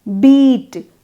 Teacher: You produce the E of beat with the front blade of your tongue raised toward your palate. Beat. Your tongue is touching the palate.